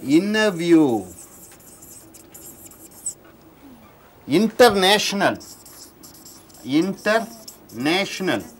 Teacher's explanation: After N, T comes with a lax vowel.